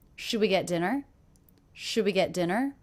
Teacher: this is a yes no question pitch goes up